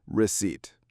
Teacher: Receipt has 2 syllables. We stress the second one. The P is silent.